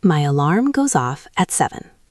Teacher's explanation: Focus on the connection between the words go and off. It sounds like one word, go off.